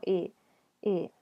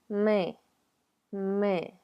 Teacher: Es una I que se pronuncia muy profundo en la garganta. Es casi como una E. Entonces preparen su boca para pronunciar la E, pero digan I.